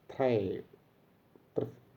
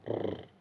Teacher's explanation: It is pronounced as a tap. Only one tapping sound is heard, not a trill